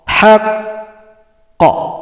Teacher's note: Kalau berhenti pada qaf yang tasydid, qafnya disukunkan, bunyi qalqalah diberikan tapi datangnya terlambat 2 ketukan